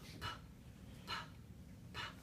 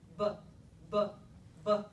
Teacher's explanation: The only difference between those two sounds is whether or not I turn my vocal folds on before I let the air out of my mouth. That's the only difference.